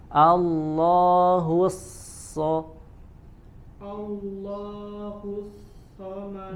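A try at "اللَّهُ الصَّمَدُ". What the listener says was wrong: Udah tebal, ulangi sekali lagi. Dalnya sempurnakan, qalqalah.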